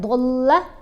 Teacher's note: دال کو ہلانا ہے، پھر دود کو لمبا پڑھنا ہے، ضلع، لام کی آواز نہیں موٹی ہوگی، صرف دود کی آواز موٹی ہوگی ، واو کو ہم نے 5 الف جتنا لمبا پڑھنا ہے،